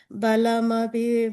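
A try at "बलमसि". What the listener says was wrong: Padmachakaru, second line, middle word, balamasi. I heard you say api. balam asi, sa sound, yeah.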